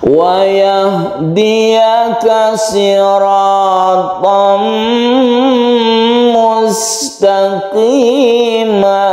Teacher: Disebut idgham karena suara dari tanwin tersebut masuk ke suara mim, sehingga dia itu bertasydid. Jadi tasydid ini bentukan dari idgham bi gunnah.